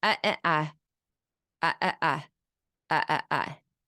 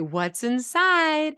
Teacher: where there's a rising intonation at the end, and that's because you're asking a question